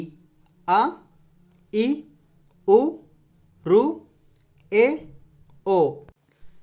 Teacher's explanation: చాలా తక్కువ సమయంలో పలుకుతున్నాం, అందుకే వీటిని హ్రస్వాలు అని అన్నారు